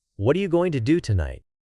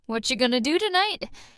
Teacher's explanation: Notice how are you becomes cha and going to is gonna. That's natural connected speech.